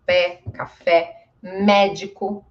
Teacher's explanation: Ele é um e mais forte e aberto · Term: som aberto